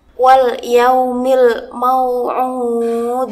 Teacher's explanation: huruf Dal yang paling akhir dibaca sukun dengan pantulan yang kuat karena termasuk qolqolah kubro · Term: qalqalah kubra